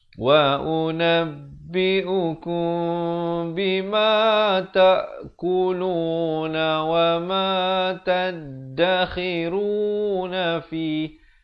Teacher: ikhfa syafawi dibacakan dengan bibir dibiarkan renggang sedikit di antara bawah dan atas dengan kadar 2 harakat